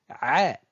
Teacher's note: elle se prononce au fond de la gorge ici je rétrécis l'esophage le passage de l'air et je pousse